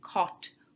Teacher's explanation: the o as in cot which is a midback rounded lax vowel